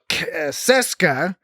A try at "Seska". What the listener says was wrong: Not Kes. Seska. know, but you said Keska.